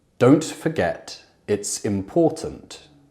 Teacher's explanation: even when speaking with an RP accent, we could have the glottal T in don't, or forget, or important.